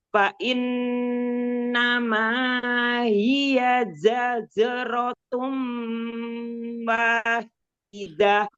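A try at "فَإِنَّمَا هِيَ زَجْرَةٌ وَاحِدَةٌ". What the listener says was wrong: Bukan tum, tanwin ketemu wawu. Tanwin ketemu wawu, idgham biguna. Ya, jangan dinaber ya.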